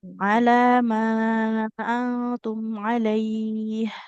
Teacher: Di antara lam dengan mim, lebih panjang huruf mim. Lam ini cuma 2 harokat. Ala. Mimnya 4 harokat.